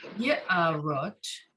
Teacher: So the ayin is completely silent. You just have the ah sound, but you have that Y there.